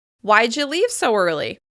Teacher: All of the words are stressed.